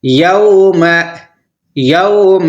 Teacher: یوم یہاں پر نرم آواز کے ساتھ ہمیں پڑھنا ہے کیونکہ یہ واو لین ہے ، واو لین کو جلدی پڑھا جاتا ہے، یوم یوم ینظر